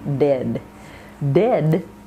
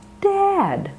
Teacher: If you shorten it and if you keep your mouth closed on the A vowel, you can get the word dead.